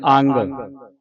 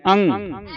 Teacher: ਅਐੇ ਟਿੱਪੀਅੰ ਅੰ ਹਾਂ ਇਹ ਐਡ ਟਿੱਪੀ ਹ ਇਥੇ ਅੱਗੇ ਇਥੇ ਗਗ ਨਹੀਂ ਲਾਉਣਾ ਅੰਗ ਨਹੀਂ ਬੋਲਣਾ